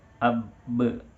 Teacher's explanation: Bunyi huruf ba apalagi ketika disukunkan itu dia akan memantul. Ya, ketika kita rapatkan ya, yang merupakan hakikat sukun itu harusnya beradu ab, tapi ya, dari beradu itu dia berbalik untuk memantul. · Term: qalqalah